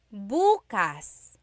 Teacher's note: emphasis is on the first syllable that means tomorrow